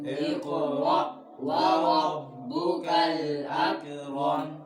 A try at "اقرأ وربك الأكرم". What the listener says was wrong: अक कलकला नहीं करना, उंगली रखो बच्चों। इक़रा व रब्बुकल अकरम।